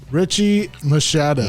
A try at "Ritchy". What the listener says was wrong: You're mistaken. That's Ritchy, not to be mistaken with Ritchie. No T.